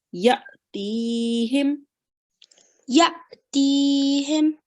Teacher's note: There is a sukoon sign on top of this alif here, and there has to be a little jerk when you read that alif with the sukoon sign